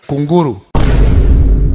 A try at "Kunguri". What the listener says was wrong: No, ni kunguri. Sio kunguru, ni kunguri. K-U-N-G-U-R-I, kunguri.